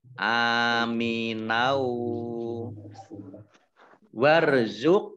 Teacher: fathah tanwin bertemu dengan huruf wawu. Bacaan idgham bi-gunnah. Idgham bi-gunnah, idgham masuk bi dengan gunnah mendengung.